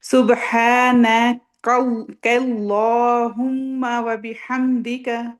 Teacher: کاف لائٹ ہے، لام ہیوی کرنا ہے، کیونکہ اللہ کے لام سے پہلے زبر یا پیش ہو تو اللہ کا نام کا جو لام ہے وہ ہیوی پڑھتے ہیں۔